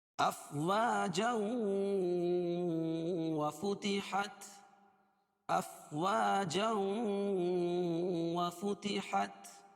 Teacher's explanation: کیوں؟ اس لیے کہ تنوین کے بعد ادغام مع الغنہ کے 4 حرفوں میں سے واو آ جائے گی، اس کو غنہ کر کے پڑھیں گے